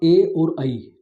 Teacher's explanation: अर्थात ए और ई ए तो इनका उच्चारण स्थान कंठ ताल है · ए और ऐ इनको कंठ तालु उच्चारण स्थान की संज्ञा में रखा जाएगा।